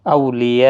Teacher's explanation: یہاں پر مد متصل ہے، 4 الف کی مقدار کے برابر کھینچ کر پڑھا جائے گا